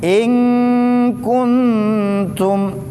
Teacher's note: Jadi kalau kita baca huruf kaf itu ada udara yang keluar. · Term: hams